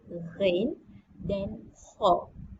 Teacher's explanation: Di kerongkong, iaitu ada 3 bahagian kerongkong, pangkal kerongkong, tengah kerongkong dan hujung kerongkong. Huruf yang berada di pangkal kerongkong adalah huruf ghin dan kha.